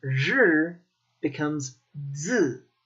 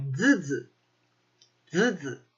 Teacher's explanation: The Southern Chinese accent relaxes that tongue, and zhi becomes zi.